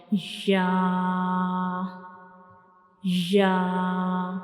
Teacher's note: When we pronounce Ya, we will touch the center of the tongue to the upper hard palate. So this is the center of the tongue and it will touch the upper hard palate to pronounce Ya, like Ya.